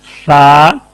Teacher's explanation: tip of tongue touching edge of front two teeth